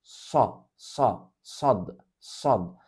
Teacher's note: dilimizin sağ ya da sol yan tarafını üst dişlerin yanına yapıştırarak söylenir